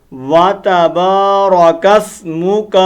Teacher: اس کاف کو ہم لمبا نہیں کریں گے بلکہ جلدی کے ساتھ ادا کریں گے۔ وَتَبَارَكَ اسْمُكَ، واتا، وتا نہیں، واتا، واتا، واو الگ ہے، تا الگ ہے۔